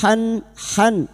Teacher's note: Han han huruf ha jangan tertukar ha han huruf ha makhrajnya ada pada wastul halqi yaitu tengah tenggorokan dan huruf ha memiliki sifat hames dan rakhawah mengalirnya nafas dan suara